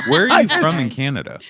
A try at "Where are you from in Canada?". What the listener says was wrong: Oh, don't do that with your upper lip when you ask.